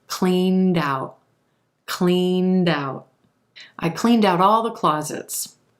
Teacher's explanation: that final D sound will link over in front of the word out and become cleaned out cleaned out I cleaned out all the